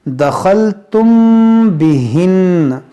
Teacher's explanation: मीम साकिन के बाद बा है, तो यहाँ पर क्या करेंगे, इख्फाए शफवी, यानी यहाँ पर गुन्ना करेंगे।